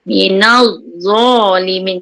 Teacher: Beza za ni dia keluar lidah kemudian pangkal lidah tu terangkat. Gitu. Sebab semua huruf isti'la sebab tu pangkal lidah kita terasa terangkat. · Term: tebal